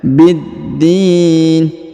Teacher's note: huruf da ditahan dan ditekan karena terdapat tanda tasdid